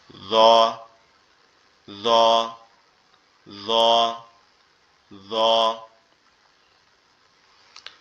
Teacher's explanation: জিহ্বার আগা সামনের দুই দাঁতের আগার সঙ্গে লাগবে, লেগে উচ্চারিত হবে জ, জ, জ, জ